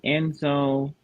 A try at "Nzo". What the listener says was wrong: In this case, Nzo, N is just for nasal. But by the way, you don't read N Nzo. You read Nzo. Nzo. But your first letter is not N. N is just your nasal. Your first letter. Nzo, yeah.